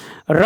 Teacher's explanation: र वर्ण वत्सर्य लुंठित सघोष अल्पप्राण व्यंजन है